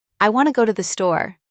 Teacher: In this sentence, want and store are stressed and the other words are said quickly and softly. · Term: Sentence stress